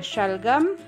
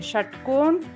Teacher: तालव्य श से शलगम, मूर्धन्य स से षटकोण